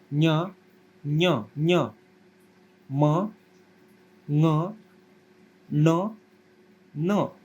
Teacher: मुख और नासिका इन दोनों को मिलाकर जिसका उच्चारण होता है उसको क्या कहते हैं, अनुनासिक